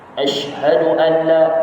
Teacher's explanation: Bila shin mati, hamas dia kuat. Begitu juga kalau sin pun, kalau dia baris sukun ataupun dia mati tidak berbaris, bunyi hamas dia tu kuat.